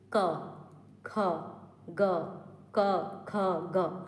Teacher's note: और कौन सा कोमल तालू है तो कंठे में क्या होगा जीभ के पिछले भाग से कोमल तालू को टच करेगा · कंठ जो है वो कोमल तालो में टच करता है · जीभ के पिछले भाग से कोमल तालु को टच करेगा। देखिए क, ख, ग, क, ख, ग। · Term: कंठ व्यंजन